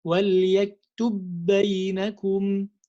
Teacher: So I have to make the idgham. And when I make the idgham, there is no qalqala anymore because I'm going to have one mushaddad letter.